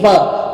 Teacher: आपका ऊपर वाला दांत नीचे वाले लिप को टच किया होगा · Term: दंतोष्ठ्य